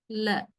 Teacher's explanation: pushed out of the body through the mouth and how does this Air Stream flow out of the body through both sides of the tongue